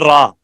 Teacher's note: हरफे रा में हमस और जहर को तलाश करोगे तो इसमें जहर है